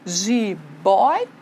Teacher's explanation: porque não é a última que é a tônica, é a penúltima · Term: paroxítona